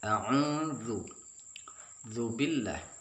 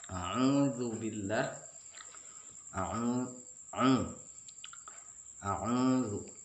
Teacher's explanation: Dzu di situ mat tabi'i, mat asli. Dibaca dua harakat.